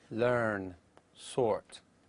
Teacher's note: the following words are pronounced without the R sound although the ER appears in the orthography